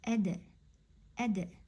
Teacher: Bugun sizlar bilan biz yumshoq dal harfini o'tamiz, ya'ni dal harfini aytganimizda bizning tilimizning ustki bo'lagi, oldingi ustki bo'lagi tanglayga tegishi kerak. add add Dal harfida bizda qalqala sifati bor, shuning uchun uni sukunda aytgan kezi biz tilimizda barincha tez yetib tamoyidan tushiramiz